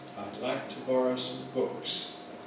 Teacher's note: When [sʌm] <some> is just like the plural of the indefinite article, (as in) <I’d like to borrow a book.> <I’d like to borrow some books.>, then it weakens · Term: weak form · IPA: [aɪd ˈlaɪk tə ºbɒrəʊ səm ∖_bʊks_]